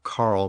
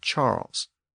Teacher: the Latin k sound became a CH sound in many later French words